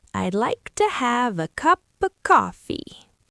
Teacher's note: completely ate the words to, and of. They were barely there, but the words cup and coffee were bright and clear.